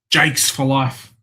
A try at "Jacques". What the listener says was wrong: Jakes. Bro, you're spelling Jakes. You're pronouncing it as if his name was like, Jakes. Jakes. More than one Jake. It's Jacques. Jacques Cousteau.